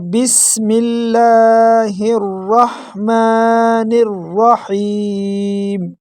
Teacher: میم کو ایک الف کے برابر کھینچیں گے۔ نون کو را کے ساتھ ڈائریکٹ ملائیں گے اور بیچ میں جو الف لام ہے اور جو زائد اس کو حذف کر دیں گے اور نون کو ڈائریکٹ را کے ساتھ ملائیں گے۔